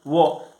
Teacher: केवल वो का उच्चारण स्थान जो है वह दंत और ओष्ठ है, ये दोनों जगह से जो है इसका उच्चारण होता है वो का। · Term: दंतोष्टम